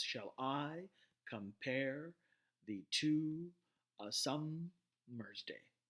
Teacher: the syllables are broken down into into unstressed followed by stressed so shall i I is emphasized compare the pair in compare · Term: pentameter